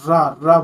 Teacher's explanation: र को बोलते समय जो जीभ और तालु का लुढ़क कर स्पर्श करना उसको बोलते हैं लुंठत मतलब लुढ़कना।